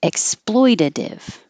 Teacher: exploitative those t's will change to D's